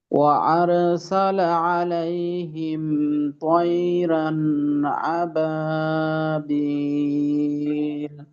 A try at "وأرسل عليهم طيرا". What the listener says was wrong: আচ্ছা, এইখানে দুইটা বিষয়। একটা হলো আর সালা, রয়ের উচ্চারণটাকে আর সালা এভাবে, যেন আর সালা এরকম না হয়। আর পরবর্তীতে তই রন, তো আপনার ক্ষেত্রে এখানে তই রান এমনটা হয়ে গেল।